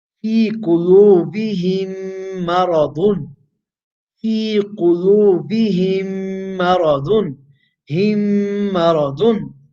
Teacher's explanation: When meme sakina comes before its ayat, another meme, then idgham will be performed by assimilating the first meme into the second meme. By inserting the first meme into the second meme, merging the two.